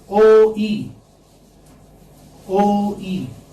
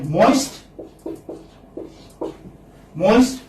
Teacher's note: when you say O, your mouth is open, your jaws are open. O, E. When you say E, then your jaws are closed. So you move from open to the closed position.